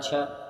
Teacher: छ जो है वो तालव्य महाप्राण और अघोष व्यंजन वर्ण के अंतर्गत आता है